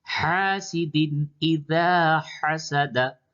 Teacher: दाल पे तनवीन है, उसके बाद हमजा हर्फ हल्की, यहाँ पे इजहार होगा।